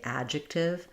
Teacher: I want to keep my a kind of short to represent that unreleased D. So the a is stressed, the D is unreleased. · So we either do adjective, where there's a little bit of a D sound that doesn't get released out, or we can pretty much leave that D out and just say adjective. It's not going to be that different.